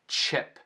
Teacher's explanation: Notem como o CH de chip é como se tivesse um T em frente. Em português não é ship, para CH é chip.